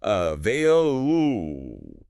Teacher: The stress is right in the middle.